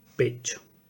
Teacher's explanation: Este contexto produce la J semivocálica que va a influir sobre esta, va a cerrar un poco más la pronunciación y va a dar este sonido palatal